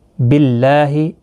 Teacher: یہاں پر باللہ اللہ کا لام باریک پڑھا جائے گا، اس کے اوپر کھڑی زبر بھی ہے، ایک الف کی مقدار کے برابر کھینچ کر بھی پڑھیں گے۔